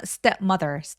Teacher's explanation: stepmother 할 때 step 첫 번째 음절에 제일 강세가 또렷하게 오게 되고요. stepmother 이렇게 두 번 강세를 가볍게 주시면 됩니다.